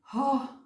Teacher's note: So it is weak voice, Ha, pronounced from the middle portion of our throat